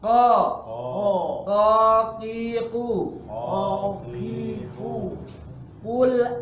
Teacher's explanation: istilla itu bukan hanya pangkal lidahnya yang diangkat tapi suaranya gemuk tapi alami gemuknya